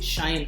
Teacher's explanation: ఈ శబ్దం పలికేటప్పుడు మీ గొంతు వైబ్రేట్ అవ్వదు, ఎందుకంటే స్వరపేటిక ఇక్కడ ఇన్యాక్టివ్గా ఉంది. కాబట్టి ఇక్కడ స్వరపేటిక పని చేయట్లేదు. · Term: నిస్వర ధ్వనులు